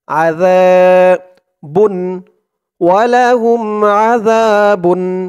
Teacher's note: ওয়ালাহুম আযাবুন যা একালিফ টান জবরের পরে খালি আলিফ আর এখানে জালের উচ্চারণটা একদম নরম পাতলা করতে হবে জিহ্বার মাথা উপরের দাঁতের মাথার সাথে লাগবে